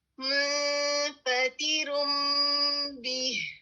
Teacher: میم کے لیے آپ کی دونوں ہونٹ بند ہو رہے ہیں, با کے لیے کھل رہے ہیں, اور آپ اس میں غنہ بھی ایڈ کر رہے ہیں